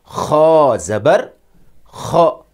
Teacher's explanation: Kha، Kha zabar kha کا گہرائی سے تلفظ کیا جائے گا۔ یہ گلے کے شروع سے نکلتا ہے